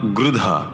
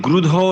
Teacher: ঋকার যখন উচ্চারিত হয় সংস্কৃতে সেটি বাংলায় ঠিক ঋ এর মতো নয় আবার উত্তর ভারতে বা দক্ষিণ ভারতে যেভাবে উচ্চারিত হয় ঠিক রু বলে তাও ঠিক নয় এই দুটোর মধ্যবর্তী স্বরই হলো ঋ